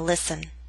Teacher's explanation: listen is one of those words in which we always omit the T sound